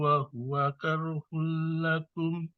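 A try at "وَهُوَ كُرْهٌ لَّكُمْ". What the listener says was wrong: Ulang, kurhun, bukan karhun. Ulang.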